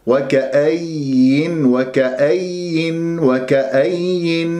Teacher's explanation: مشددة فيها النبر، وما أضغط على المخرج حتى أنا لا يتشوه صوت الياء